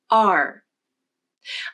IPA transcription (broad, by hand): ɑɹ